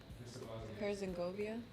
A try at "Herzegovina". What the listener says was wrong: No, no, it's Vina at the end, not Govia. Vina. No, you said Govia. Herzegovina.